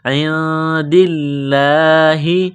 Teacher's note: ہے حروف اخفا ہے تو نون ساکن پر غنہ کریں گے لفظ اللہ کے نام سے پہلے زیر ہے تو لفظ اللہ کے نام کو باریک کرنا ہے